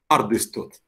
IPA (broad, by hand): 'cardɨstut